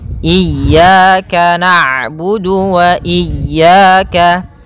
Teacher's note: ain itu punya sifat namanya bainiyah, yaitu bacaan di antara syiddah dan rokhawah. Kalau syiddah suaranya tertahan, kalau rokhawah suaranya mengalir, maka di antara keduanya.